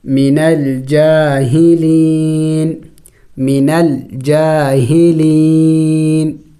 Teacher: وقف میں اس نون کو سائلنٹ کر دیں گے یعنی ساکن کر دیں گے